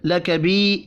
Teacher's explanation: یا مدہ کو بھی ایک الف کے برابر کھینچ کر پڑھیں گے